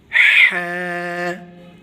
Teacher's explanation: گلے کے درمیان سے ہا پڑھا جائے گا